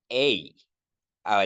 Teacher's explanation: es minúscula la yota se coloca debajo y se llama suscrita aquí se pronuncia e como si no existiera la yota porque esta yota es muda